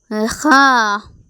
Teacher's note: ഹ എന്ന് പറയുന്ന അക്ഷരം പുറപ്പെടുന്നത് തൊണ്ടയുടെ മേലെ അറ്റത്തു നിന്നുമാണ്